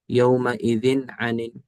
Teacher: یہ ذال کی تنوین کے اندر ہم نے کچھ بھی نہیں کیا، ظاہر کر کے پڑھ دیا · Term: اظہار